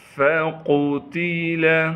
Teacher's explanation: انہ فکر وقدر فقتل، فا کو باریک کر کے پڑھنا ہے، قاف کو موٹا کر کے پڑھیں گے کیونکہ قاف موٹے حروف میں سے ہے۔ تا کو بھی باریک کر کے پڑھنا ہے، لام کو بغیر کھینچے پڑھیں گے۔